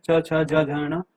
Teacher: जो तालु की सहायता से उच्चारित होने वाले जो भी व्यंजन होते हैं वो हमारे तालव्य व्यंजन होते हैं। जैसे कि जो च वर्ग जो है, च छ ज झ ण, ये वाला जो वर्ग है ये पूरा तालव्य व्यंजन वाला है।